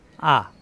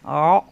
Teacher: আত ক, হামজা জবর আ মিলবে আইনের সাথে, আ কণ্ঠনালীর শুরুতে আ, আর আইন কণ্ঠনালীর মাঝখানে চাপ দিয়ে অ